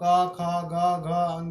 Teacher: कंठ का सहारा लेना पड़ता है, इसीलिए ये सारे कंठ ध्वनियां हैं।